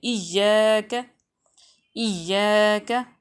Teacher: حمزہ کو ہم نے ایاک نہیں پڑھنا جھٹکے کے ساتھ